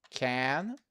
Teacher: you have this vowel a a which is a very relaxed vowel